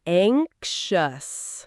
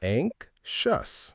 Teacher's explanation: Notice that the X sounds a bit like a KS followed by a sh sound.